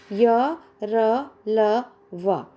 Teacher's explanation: अंत से semi constant, स्वर और व्यंजन के बीच में स्थित होने के कारण इन्हें अंतस्थ कहा जाता है। ये इसका उच्चारण जीभ के किसी विशेष भाग को नहीं छूता।